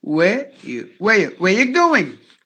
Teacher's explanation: Where are you becomes where you.